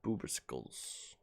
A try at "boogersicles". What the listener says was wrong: Oh, booger, not boober. You said boober.